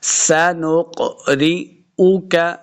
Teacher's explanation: یہ جو قاف ہے یہ حروف مستعلیہ سے ہے، اس کو ہمیشہ موٹا کر کے پڑھنا ہے، پر کر کے پڑھنا ہے. سنقرئک را کو باریک پڑھیں گے، را کو موٹا نہیں کرنا · سنقرئک را کو باریک پڑھیں گے، را کو موٹا نہیں کرنا، را سے ری. سنقرئک حمزہ پیش او، کاف زبر کا، اس کاف کو موٹا نہیں کریں گے